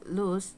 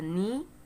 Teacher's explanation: when we say the vowel sound e like in the word uh knee we see here that our lips are unrounded